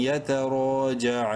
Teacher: تین الف کے برابر لمبا کریں گے عین کو